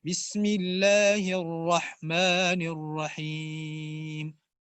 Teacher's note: رحمان میں جو را ہے اس کو موٹا پڑھنا ہے